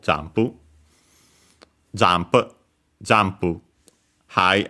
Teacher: we had jump accented just like in English on the first syllable Jump, jump, jump high and then everything else low.